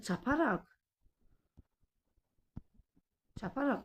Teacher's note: vurğu şəkilçinin ilk hecasının üzərinə düşmüş hesab olunur.